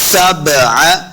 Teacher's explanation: बा हुरूफ़ क़लक़ला से है, तो हमने इसको खूब वाज़े करके पढ़ना है, हिला के पढ़ना है।